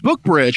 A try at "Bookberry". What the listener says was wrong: Bookberry. Bookberry. You said Bookbridge. Like Umbridge.